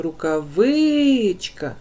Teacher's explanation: відповідно в нас третій склад тому що коли ми вимовляємо Рукавичка Ми чуємо що наголос падає на третій склад